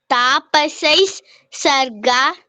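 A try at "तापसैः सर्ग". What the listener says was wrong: ಒಟ್ಟಿಗೆ ಹೇಳ್ಬೇಕು, ಪಾಸ್ ಕೊಡ್ಬಾರ್ದು. ಅಲ್ಲಿ ಯತಿ ನಿಯಮ ಅಂತೀವಿ, ಅದಿಲ್ಲ. ಪದ್ಯಗಳು ಹೇಳುವಾಗ ಎಲ್ಲಿ ನಾವು ಪಾಸ್ ಕೊಡ್ತೀವಿ ಅದಕ್ಕೆ ಯತಿ ನಿಯಮ ಅಂತ. ಇಲ್ಲಿ ಯತಿ ನಿಯಮ ಇಲ್ಲ. ಸೊ ಸ್ಮೃತಾಂ ತಾಪಸೈ ಸರ್ಗ ಒಟ್ಟಿಗೆ ಹೇಳ್ಬೇಕು.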